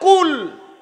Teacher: jika Anda membacanya dengan ujung lidah, maka akan menjadi 'kul'